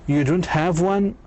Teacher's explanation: negative statements with intonation that goes up at the end